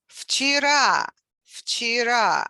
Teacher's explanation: And V, which is voiced consonant, becomes voiceless, F, because it precedes Ch, which is also voiceless. So it's difficult to say Vch.